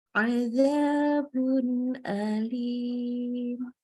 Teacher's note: Jadi bunnya jelas bun. Ya, tidak boleh kita tambahkan dengung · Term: idhar halki